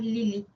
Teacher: la vocal I es una vocal alta anterior